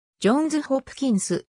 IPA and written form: dʒˈɒnz hˈɒpkɪnz (Johns Hopkins)